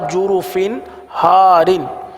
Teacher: तनवीन के बाद हा है, हा हुरूफ हलकी में से आ रहा है, लिहाजा यहाँ पर इजहार का कायदा होगा, गुन्ना नहीं करेंगे